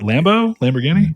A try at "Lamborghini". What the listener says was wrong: Well, you just said guinea, and I'm like, I was like, did he misspeak?